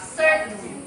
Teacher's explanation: T is unreleased or held before N